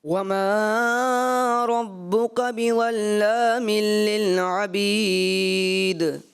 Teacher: انہوں نے تھوڑا سا جو ہے مد اصلی کو زیادہ کھینچا